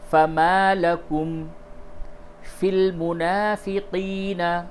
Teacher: فما میں جو الف ہے یہ الف مدہ ہے، اس کو تھوڑا سا کھینچ کر کے پڑھیں گے۔ فَمَا لَكُمْ فِي الْمُنَافِقِينَ، کھڑا زبر بھی الف مدہ کی طرح کھینچ کر کے پڑھتے ہیں۔